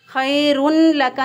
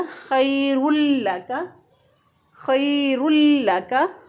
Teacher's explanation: नून की आवाज़ के बग़ैर, गुन्ना किए बग़ैर, नाक में आवाज़ ले जाए बग़ैर हम लाम को अदा करेंगे। रॉ को लाम के साथ मिलाकर अदा करेंगे।